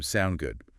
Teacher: Or the short form sound good again with that upward inflection